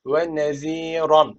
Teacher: Peltek Z ve çeker var bir Elif uzatıyor